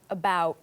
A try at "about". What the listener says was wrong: Okay, about. That's Canadian. You got that wrong.